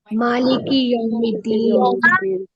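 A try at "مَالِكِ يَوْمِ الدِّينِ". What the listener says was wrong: Very good, very good, मालिकी यौमिद्दीन।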